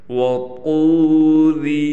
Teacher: طا حروف مستعلیہ میں سے ہے، لہٰذا اس کو موٹا کر کے پڑھا جائے گا۔